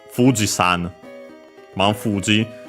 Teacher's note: The most typical example, Fuji-san, Mount Fuji. Fuji is accent on the first mora, so yeah, Fuji-san keeps being accented on the fu.